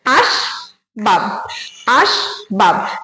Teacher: স্বরধ্বনি উচ্চারণ হচ্ছে না সুতরাং এটা কিন্তু রুদ্ধ দল আর এখানে বাব যখন বলছি তখনও ব এর সঙ্গে কোন স্বরধ্বনি উচ্চারণ হচ্ছে না তাহলে এখানে দুটো দল আছে দুটো দলই কিন্তু রুদ্ধ দল এটা